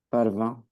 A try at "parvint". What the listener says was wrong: Parvint. Toi, tu m'as dit parvient. Du coup, parvint.